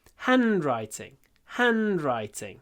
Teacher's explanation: it's another word which consists of two words handwriting the stress is on the first one